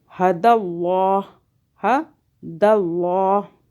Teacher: اللہ موٹا ہو رہا ہے، اللہ سے پہلے دال پہ دیکھیں زبر آ رہا ہے